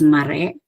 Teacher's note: re gets the primary stress, whereas the initial syllable ma gets the secondary stress